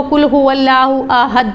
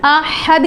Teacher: हा जो है इसका मुकाम हलक का दरमियान है। और जब हम इसको वहां से अदा करेंगे तो अहद की आवाज आएगी।